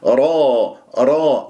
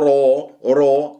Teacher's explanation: لا تكور الشفاه، هي مفتوحة فتكون مفخمة الراء